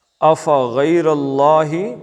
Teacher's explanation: غی اور را موٹا، اللہ کا لام بھی موٹا